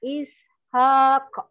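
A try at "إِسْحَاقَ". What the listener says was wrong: Panjangin Ishaq.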